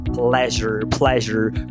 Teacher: O nome técnico é consoante fricativa pós-alveolar vozeada. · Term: Edge